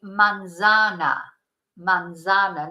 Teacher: if you were in South America you wouldn't use a th sound